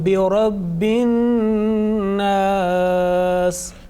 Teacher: Now remember, this is the nasal sound. You are making Ghunnah here on An-Nas